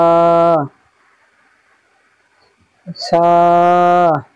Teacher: জিভের আগা এবং সামনের উপরের দুই দাঁতের আগার সাথে লাগিয়ে উচ্চারিত হবে সা